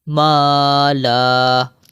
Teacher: وقف کی صورت میں یہ دو زبر جو ہے یہ الف بن گیا.